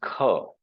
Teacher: it is K itself, which when aspirated, Mahapran ho jata hai uska, it becomes Kha